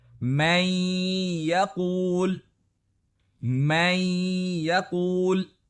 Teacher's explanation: نون مکمل طور پر اگلے حرف میں ملا دیا جاتا ہے، اور نتیجے میں اس حرف کو آپ غنہ کے ساتھ ادا کرتے ہیں، یعنی ناک سے ہوا نکالتے ہیں، جس کی مقدار تقریباً 2 حرکات یا 1 سیکنڈ ہوتی ہے، جیسے کہ ان مثالوں میں۔